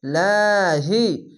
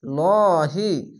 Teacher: যদি নিচে যদি আসে তাহলে পাতলা করে হবে লাহি এবং উপরে আসলে লহি মোটা করে হবে